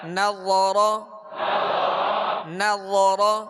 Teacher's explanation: نون باریک، را پر اور نرمی کے ساتھ، را کو پر پڑھیں گے، زبر ہے، نظر، ذکر، ذکر، کسب، ابلی.